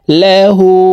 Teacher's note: واو زبر وا نون حا زبر نح ونح نون পেশ নু ونحن লাম জবর লা হা উল্টা পেশ হু হার উপরে উল্টা পেশ আছে তাই এই হাকে ঠোঁট গোল করে এক আলিফ টেনে পড়ব